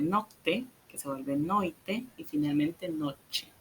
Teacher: la T dental atraída por la I, que la vuelve che en español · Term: palatalización